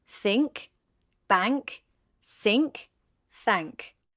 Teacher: The n changes to n g before k and g.